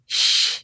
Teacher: Sifatnya at-tafashi, menyebarnya angin dari rongga mulut.